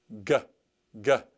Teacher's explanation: Gamma is a guttural sound. It comes from kind of down deep in your throat. And gamma has the G sound as in G, G, G, just like the word gift.